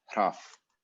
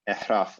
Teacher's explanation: if there's a vowel after it, the R becomes syllable initial essentially, or in this compound, so it gets preserved. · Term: R is actually preserved